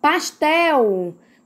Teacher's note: Então, como a última sílaba é a mais tônica, é a mais forte, então é uma palavra oxítona. Pastel, qual é a sílaba mais forte? É o tel.